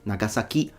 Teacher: He's trying to put the stress towards the end, Nagasaki, because he's approaching the language as if it were a stress-based language.